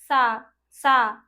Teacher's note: जीभ हमारी दांतों को टच करनी चाहिए। जो जीभ हमारी होती है वो दांतों को छूनी चाहिए।